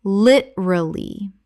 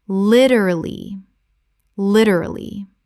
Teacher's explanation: Three syllables in natural speech. The second syllable almost disappears.